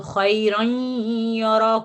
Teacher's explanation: ہم نون کی آواز جاری کرتے ہیں کیونکہ اس کی دوسری حرکت میں نون ساکن چھپا ہوا ہے